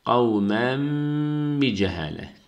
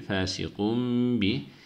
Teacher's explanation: B harfi geldiği zaman bu şekilde okuyoruz. Tenvin ya da sakin nundan sonra B gelirse o nun ya da tenvinin içindeki nunu mim harfine çevirip bir elif miktarı tutuyoruz. Bi cehaletin, burada da ihfa var.